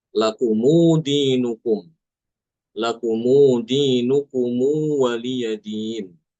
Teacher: menambahkan wawu sukun setelah mim jamak. Jadi mim jamaknya tidak disukun tapi diberi harakat domah. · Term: silah